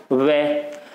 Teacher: जो हमारे ऊपर वाले दांत हैं ये जो नीचे वाले होठ से स्पर्श कर रहे हैं